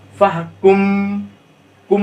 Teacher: کم میں دیکھیے یہ بھی دونوں ہونٹ مل جا رہے ہیں، اس کو اخفاء شفوی کہا جاتا ہے